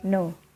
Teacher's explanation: The sound is called voiced alveolar nasals, for example, in the word no.